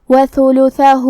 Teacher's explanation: آخری میں ہا پہ الٹا پیش ہے تو یہاں بھی حکم ہے مد صلہ صغرا. ہم اپنی آواز 2 مد کے برابر لمبی کریں گے.